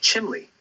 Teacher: you might hear chimney pronounced more like chimley with that l sound sneaking in there